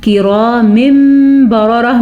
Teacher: नून तनवीन दो ज़ेर के बाद हर्फ इक़लाब बा आया हुआ है, तो इसलिए इसे बा को मीम में बदल देंगे, तो इसे इक़लाब कहते हैं।